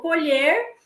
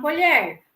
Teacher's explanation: Um tem um som, um timbre mais fechado e o outro mais aberto.